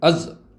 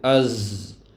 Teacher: زا کے اندر سانس اور آواز بند نہیں ہو رہی ، بلکہ کیا ہوتا ہے، آواز جاری رہتی ہے کہ نہیں،